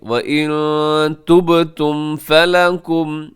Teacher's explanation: یہاں نون ساکن کے بعد تا ہے تو یہاں اخفا کیجیے گا نون ساکن میں